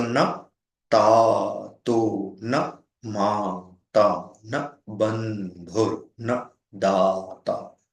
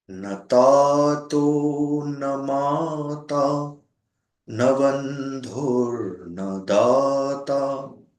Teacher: in the metrical pattern here, one finds one short syllable followed by 2 long syllables, 4 times repeated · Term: Bhujanga Prayatam